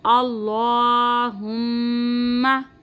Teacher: अल्लाह के नाम को पूरी यानी मोटा पढ़ेंगे, मीम मुशद्दद का हम यहाँ पे गुन्ना करेंगे